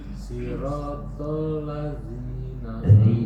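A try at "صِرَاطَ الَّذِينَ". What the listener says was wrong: masih tebal. Keluarkan ujung lidahnya. Siratal ladzi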